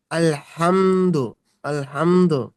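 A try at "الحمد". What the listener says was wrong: পেশ পরিপূর্ণ আলহামদু আলহামদ দাল কলকলা হবে দালটাকে মানে শাকিন করে পেশটাকে বাদ দিতে হবে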